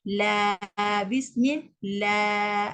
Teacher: Sebelum alif ada huruf lam yang berbaris atas. Lam adalah huruf nipis. Jadi dia kena nipis.